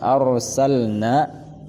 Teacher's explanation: A tipis, ra tebal, bukan iz arsalna tetapi ar. A yang tipis, ra yang tebal, tafkhim